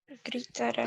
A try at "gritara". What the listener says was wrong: Gritara, sem o acento, sem o ato no final. Porque é a conjugação no verbo do pretérito mais que perfeito do indicativo, porque ela indica uma ação terminativa antes de uma outra ação.